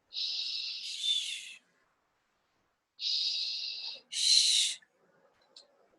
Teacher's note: This is a voiceless consonant. It's pronounced sh. This is the sound you make if you want someone to be quiet.